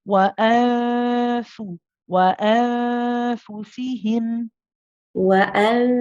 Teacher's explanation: Okay, so just the ikhfa, your tongue was touching the makhraj of the noon, and so you remember the tongue should not be touching the makhraj of the noon, or even if you kept that bit clear, some part of your tongue was touching the upper palate.